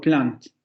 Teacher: en posición de ataque, vamos a tener una lateral. Y en posición de coda vamos a tener una nasal